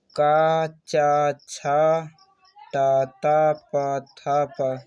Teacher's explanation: जिन ध्वनियों के उच्चारण में उच्चारण तंत्र कंपित ना हो उन्हें अघोष वर्ण कहते हैं जैसे प्रत्येक वर्ग का पहला और दूसरा व्यंजन का च छ